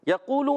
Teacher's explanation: یا پر زبر ہے یہ نہیں کھینچنا، قاف واو پیش قو کھینچیں گے